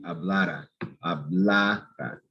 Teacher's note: the syllable before the R, that's going to be stressed